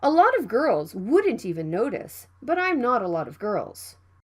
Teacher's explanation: the T sound between vowels it can be flapped